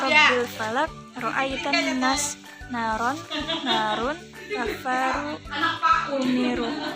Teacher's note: Lalu masih pembahasan ro tafkhim, di mana ro tafkhim adalah huruf ro yang dibaca tebal yang terdapat pada kalimat atau lafal dalam perkataan Arab.